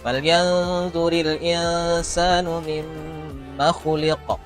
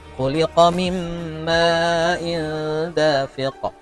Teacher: Kemudian di akhir-akhir yang ada huruf qalqalah, karena qalqalahnya letaknya di akhir, maka disebut dengan qalqalah kubra. Artinya harus jelas, harus ditampakkan lagi, harus ditimbulkan lebih kuat qalqalahnya daripada yang ada di pertengahan ayat.